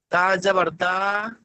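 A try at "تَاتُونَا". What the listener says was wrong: তা যাবার তা নেই, এখানে আছে, এখানে হামজা আছে, দেখেন এই সাকিনটা আমি দিয়ে দিচ্ছি, দেখেন তা, হামজা জাবার তা।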